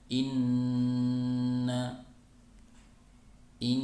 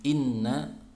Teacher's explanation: ditahan dulu ya ketiga harokat kemudian suaranya bersumber dari rongga hidung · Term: Nun bertasydid